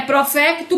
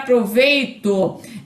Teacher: E ainda o fonema grafado com a letra F, né, que passa para o fonema grafado com a letra V, né? Então, o F é surdo e o V é sonoro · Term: sonorização